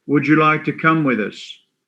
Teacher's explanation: When we have a da sound at the end of a word, followed by a ya sound, it goes to ja.